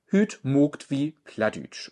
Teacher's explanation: Das lange A ist ein O oder ein O regional